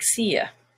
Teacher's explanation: You, when it's not stressed, is ya